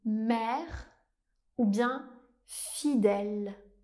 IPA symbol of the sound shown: ɛ